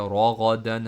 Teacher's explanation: ہم نے غائن کو موٹا پڑھا، غائن مڈل تھروٹ سے پڑھیں گے